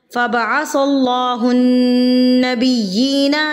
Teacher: नून मुशद्दद हम यहाँ पर गुन्ना करेंगे।